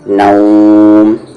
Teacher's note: پھر نا کے ساتھ واو، نو، اور میم میں ملا دیں گے کھینچ کر. 4 حرکت کے ایکول کھینچیں گے